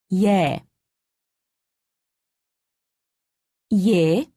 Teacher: imagine that you are trying to say ee and e quickly be sure not to pause in between pronouncing the two sounds